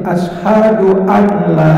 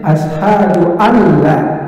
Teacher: Mestinya asyhadu alla. Di situ ada nun mati ketemu lam, namanya idgham bila gunnah. Jadi nunnya dihilangkan, lam yang dibaca